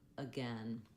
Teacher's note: It just says the vowel schwa, the sound, because the stress is on gain. That's where we're going to have a clear vowel. · That first letter A is just really short and reduced.